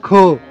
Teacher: क त्याच्यामध्ये जर आपण हा महाप्राण जोडला आणि अ स्वर त्यात आला तर त्याचा उच्चार होतो ख